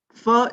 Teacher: this set of sound is known as fricative sound so fur is a labiodental sound why because the lower lip and the upper upper set of